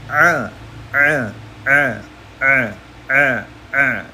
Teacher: ain itu ee agak ditekan sedikit di tenggorokan tengah